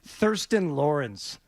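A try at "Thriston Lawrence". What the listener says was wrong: Tristan Lawrence. Yeah, the H for some reason is silent. yes. It looks like Thurston, but it's something else.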